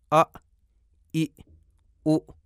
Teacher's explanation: جبکہ اگر حمزہ متحرک ہو او تو جب آواز شروع ہوتی ہے تو آواز کی تاریں بند ہوتی ہیں اور پھر کھل جاتی ہیں